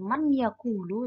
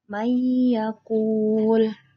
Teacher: Nah, dia melebur dan ada gunnahnya, mendengung. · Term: idgham bi gunnah